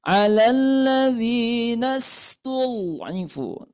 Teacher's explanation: Bunyinya tipis. Kemudian sin ini mempunyai sifat rakhawah yang suaranya itu mengalir, tidak tertahan